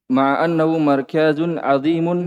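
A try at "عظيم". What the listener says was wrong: Tidak dipanjangkan kapnya. Biasa cepat.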